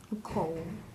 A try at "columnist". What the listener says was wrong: Ooh, I hear you saying a long O sound, but we need to close in our first syllable. Make that vowel short.